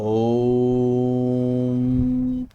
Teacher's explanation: तीन का मतलब है कि भाई जब हम ओम बोलेंगे तो इसे तीन गुना ज्यादा लंबा खींचना है हमें।